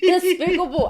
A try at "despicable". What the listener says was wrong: Say it slow. You see, you need to say the P.